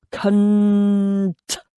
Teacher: I love the forceful grunt of the C and the T, sandwiching the softer N sounds, enabling one to spit the word out like a bullet or extend the N and roll it round your mouth for dramatic effect. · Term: plosive T